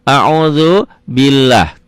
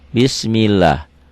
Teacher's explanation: Oh, ini barisnya di bawah kasroh. Berarti lafaz Allahnya dibaca tipis.